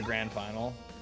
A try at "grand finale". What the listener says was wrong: Did you say grand final? Grand finale. He said final? I thought it's grand finale, bro.